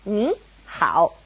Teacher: if it's a third tone and a third tone next to each other, ni, hao, it changes to a second tone and a third tone, ni, hao. Let's look at some more examples.